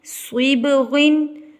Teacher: صبغن 2 زیر کے بعد صاد آ گیا، یہاں پر اخفا مخففہ ادا کیا جائے گا، موٹا اخفا ادا کیا جائے گا، یعنی کہ ادھورا گنہ